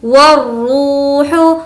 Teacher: روح کو کھینچ کر پڑھیں گے کیونکہ واو مدہ، واو مدہ مینس واو جس پر جزم ہے اور اس سے پہلے پیش۔